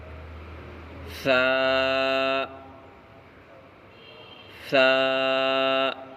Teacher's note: ثا کا مخرج زبان کی نوک اور اوپر کے دونوں دانتوں کا کنارہ